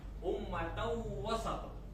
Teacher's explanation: tanwin fathatain bertemu dengan huruf waw, hukumnya idgham bi gunnah. Jadi bacanya agak dengung. Ummatau wasat, ya.